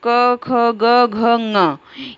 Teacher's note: क ख ग घ ङ, ये पूरे कंठ से बोले जाते हैं। ये कंठ वर्ण है। इनको मतलब ये इनका उच्चारण स्थान कंठ है, ये कंठ के द्वारा बोले जाते हैं।